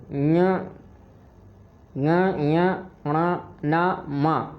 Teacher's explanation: पर प्रत्येक वर्ण के अंतिम वर्ण ना, मा को अनुनासिक भी कहा जाता है। इनका उच्चारण स्थान नासिका से भी होता है।